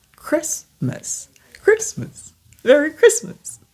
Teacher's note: Ici c'est le té muet Christmas